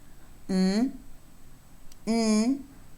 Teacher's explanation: palate or the velum is lowered and the air is unable to go all through the mouth or through the oral tract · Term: nasal sounds